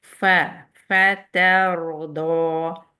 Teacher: ہر فا پہ آپ دیکھیں گے پہلے ایئر آتی ہے، پھر آپ کی ساؤنڈ آتی ہے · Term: ہمس